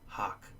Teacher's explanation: someone from the west would just hear a single vowel, which is a low back vowel